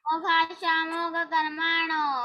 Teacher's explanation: जो विसर्ग है उसका ओ बन जाता है मोघ कर्माणो